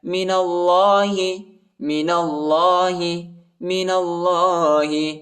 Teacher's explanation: نون کو لام کے ساتھ ملائیں گے، الف نہیں پڑھا جاتا، الف کے اوپر حرکت نہیں ہے، اور اللہ کے نام کو موٹا پڑھیں گے